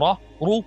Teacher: When the Ra has a vowel, either Fatha or Dhamma, it's still deep.